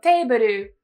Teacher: many japanese speakers will split it up and say something like debaru to make it a little bit easier to pronounce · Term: consonant clusters